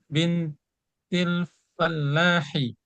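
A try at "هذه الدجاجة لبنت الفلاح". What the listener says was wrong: Lam. Ada lamnya. Libin. Ada lam. Lam.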